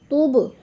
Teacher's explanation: تُب پہ قلقلہ ہے، حرف با ہے اور ساکن ہے تو ادھر قلقلہ کرنا ہے ہم نے